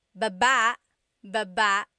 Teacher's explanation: Emphasis is on the second syllable